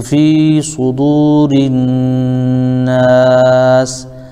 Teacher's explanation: سین کو ہم آیت کی وجہ سے وقف کر دیں گے تو یہاں پر مد عارض بن جائے گا